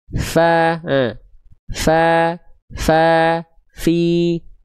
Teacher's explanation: Ujung gigi atas kita disentuhkan dengan perut bibir bawah.